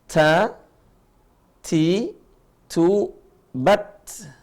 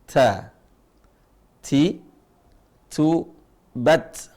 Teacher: Kalau huruf ta, ujung lisan ketemu dengan gusi gigi seri atas.